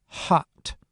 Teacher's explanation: If the vocal folds are open a little bit, then air will rush through the narrow opening, creating a slightly hissy sound like at the beginning of the word hot